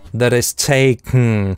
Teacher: здесь он носовой взрыв делает [tʰeɪkŋ]. В нос взрывает.